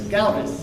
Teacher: The accent's on the first syllable.